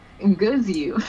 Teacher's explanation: So pre-nasalized G, followed by schwa, z, I, u. That's the proto form.